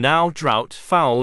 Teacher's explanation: This diphthong starts in a slightly more front position of the vowel found in far and car. A glide to the vowel sound in put would be too large a movement, so the glide is not fully completed.